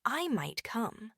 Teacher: the voice falls on might and then rises slightly on come, indicating uncertainty, not a definite yes. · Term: fallrise intonation, fall-rise intonation